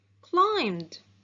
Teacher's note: The verb climb ends in the voiced sound b. So the ed ending sounds d.